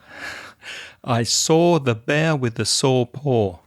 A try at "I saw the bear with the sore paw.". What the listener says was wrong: See, you pronounce the word S-A-W and S-O-R-E the same. But for me, the difference. I saw the bear with the sore paw. So slightly different.